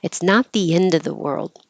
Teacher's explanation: the of has a v sound but you don't have to say the V sound when it's before a consonant · you don't have to make the final D just hold the tongue position